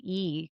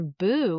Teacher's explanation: But for boo, in anticipation of the rounded vowel that comes after, my lips are rounded